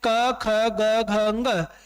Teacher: क का मतलब कैवर्ग। पूरा का पूरा जो हमारा कैवर्ग है वो किससे बोला जाएगा? वो कंठ से बोला जाएगा। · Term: कंठे ध्वनियां